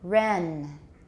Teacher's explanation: the vowel even though it's short it's still relatively long compared to the length of the n